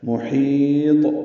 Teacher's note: محیط میم کو جلدی پڑھنا ہے، ہا وسط حلق سے ادا کرنا ہے، اس کو لمبا کرنا ہے، اور طا ساکن پہ قلقلہ ہوگا، یہ وقفاً قلقلہ ہے، طا ساکن ہوا ہے.